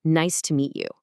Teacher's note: Because we're gluing them together, the phonetic sound actually changes into a very natural nice to meet ya. Yeah, nice to meet ya.